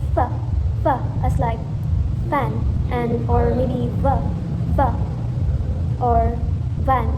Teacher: So you can actually see my teeth when I form the sound. And notice how our lower lip rests on our upper teeth. That's the labiodental action.